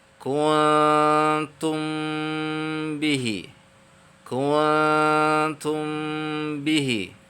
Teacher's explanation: ketika mim sukun bertemu dengan ba itu, ya, mulut kita atau 2 bibir kita tertutup di dalam pengucapannya